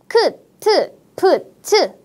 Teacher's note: 크트 프츠 같은 거센 소리 바람이 많이 나오는 소리이고